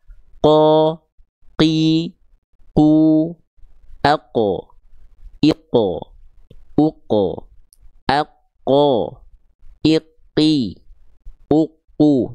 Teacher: kalau tepat dari pangkal lidah semua nempel ke langit-langit lunak saja. Sehingga nggak akan ada keluar percikan nafas. · Jadi nggak keluar sedikit pun percikan-percikan nafas. Karena dia nempelnya, kalau tepat dari pangkal lidah semua nempel ke langit-langit lunak saja. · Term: huruf qaf